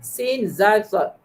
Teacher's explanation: Desiran kuat yang dilepaskan di antara hujung lidah dan gigi bawah. Huruf sad paling kuat desirannya, zal sederhana, sin desiran yang lemah. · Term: Sofir berdesir